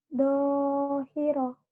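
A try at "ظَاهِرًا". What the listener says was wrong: Do-nya agak pecah. Zo. Kalau do yang suatu zo. Kalau yang do yang ini do. Z-H-O ya.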